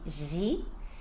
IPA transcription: ʒi